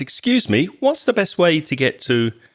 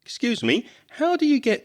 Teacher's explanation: the best way to get to and notice intonation there his voice starts very high because that sounds more polite